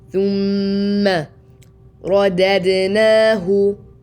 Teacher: And the meme has a ghunna, so 2 حركات.